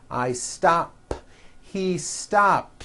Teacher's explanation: stop ends with an unvoiced p